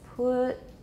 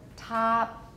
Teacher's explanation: pretty much all we're hearing is a vowel turning into silence it's a vowel turning into silence put right or top it's